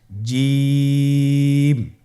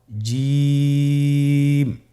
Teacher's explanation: এর মাখরাজ হলো জিহ্বার মধ্যখান, তার বরাবর উপরের তালুর সঙ্গে লাগিয়ে উচ্চারিত হয়।